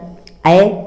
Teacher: ए यहाँ पर भी मुंह आधे से अधिक खुलता है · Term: अर्धविवृत्त स्वर